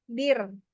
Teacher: Tipis, karena kan sebelumnya berharokat, hurufnya berharokat kasroh. Jadi ini aja ringan aja, bir.